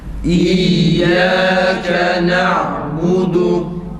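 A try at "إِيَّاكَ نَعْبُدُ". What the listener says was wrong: Yalnız ba'yı uzatmayalım. Ba biraz uzatılıyor sanki. Na'budu değil. İyyâke na'budu. İyyâke na'budu.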